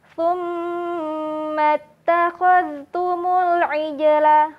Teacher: Ketika mim bertasydid, maka sahabat perlu menahannya selama 3 ketukan juga